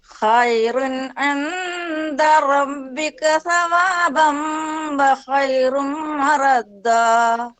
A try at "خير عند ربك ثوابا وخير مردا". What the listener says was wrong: റബ്ബിക എന്നുള്ളിടത്ത് ഒരു മീമ് വരുന്നുണ്ടോ? മീമ് വരാൻ പാടില്ല. റബ്ബി ബ മ ബ മ ബ മ ഖൈറുൻ